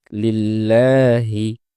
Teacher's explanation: ২ নম্বর হচ্ছে লিল্লাহি, এ জায়গায় যেহেতু আল্লাহ শব্দের লামের পূর্বে জের এসেছে, এজন্য এই লামটি পাতলা হয়ে উচ্চারিত হবে